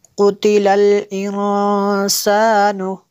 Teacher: یہاں پہ نون ساکن کے بعد سین ہے حروف اخفا میں سے تو یہاں پہ اخفا ہوگا، اس لیے غنہ کیا